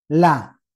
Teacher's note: lam ini letaknya di ujung apa namanya pinggir lidah kemudian naik ke permukaan